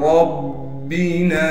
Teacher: را کو موٹا کر کے پڑھنے کے ساتھ را کو با سے ملا دیں گے اس لیے کہ با پر تشدید ہے اور تشدید ہونے کی وجہ سے با پر تھوڑا ٹھہراؤ رکھیں گے.